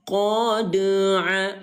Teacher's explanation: dal sukun atau dal yang baris mati ini ayah bunda ya, maka wajib terbaca dengan pantulan yang ringan. Maka terbaca qod aa dalam artian pantulannya itu mengalir. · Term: qalqalah sughro, qalqalah sughra